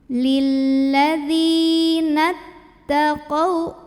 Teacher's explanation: Lam sukun dan lam fathah, sehingga huruf syamsiyahnya adalah lam juga. Lilladzi, dzi mad tabi'i karena ada ya sukun sebelumnya kasroh, maka baca dzalnya panjang 2 harokat